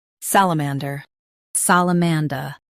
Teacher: Stress sal and keep man soft. The der is light.